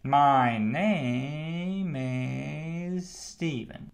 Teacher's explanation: You go up on the vowel sound and then you go down like a rollercoaster increasing the pace a little bit.